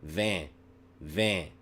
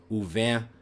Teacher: So between u and vin, there is a movement of there's a relaxation in my velum, u vin. But then immediately I'm putting it right back up, u vin tu. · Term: nasal vowels